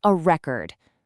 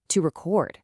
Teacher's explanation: If you put the stress on the first syllable, it's a noun, a record. But if you shift that exact same physical stress to the final syllable, it suddenly becomes an action verb, to record. Just by changing the volume and pitch of your breath, you are completely altering the grammatical structure of the word itself.